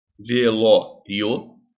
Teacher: esse ditongo tá crescendo porque ele parte do menor som pro maior som · assim velório tá uma palavra paroxítona por porque a sílaba tônica a sílaba tônica é penúltima e ela termina no ditongo que cresce porque primeiro vem a